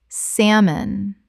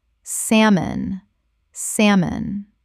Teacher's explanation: The l is completely silent. Two syllables only.